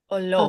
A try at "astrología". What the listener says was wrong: Just like English, just think about it. You're not taking the lo out because English also has it, right? So astrología.